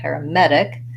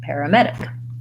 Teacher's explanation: Paramedic, main stress on med.